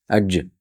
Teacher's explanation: Jim harfi tilimizni oʻrtasidan yuqori tanglakka tegib chiqadi. Ajj tegib birdaniga ovoz otib chiqadi.